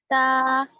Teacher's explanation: زبان کی نوک کو اوپر کے سامنے والے دو بڑے دانت یعنی ثنایا اولیاء کی جڑ میں لگانے سے نکلتا ہے. تا, باریک ادا کریں گے ایک دم.